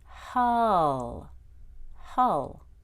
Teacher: the first short U goes up in intonation and the second one goes down.